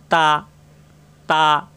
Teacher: তা, জিহ্বার আগা উপরে 2 দাঁতের গোড়ায় লাগবে,